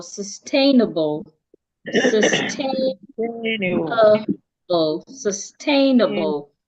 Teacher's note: so the a is the part that I said louder, longer and clearer. The other part I will not say loud, I will not say it long.